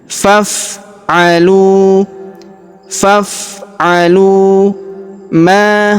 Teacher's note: Huruf lu kita panjangkan dua harakat karena terdapat wau sukun di depannya. Alifnya tidak dibaca.